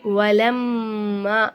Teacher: மீமுக்கு மேல சத்து செய்யப்பட்டு வந்தனால இந்த மீமை நல்லா அழுத்தி உச்சரிக்கணும்